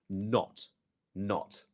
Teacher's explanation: it's a fast closing of the throat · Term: glottal stop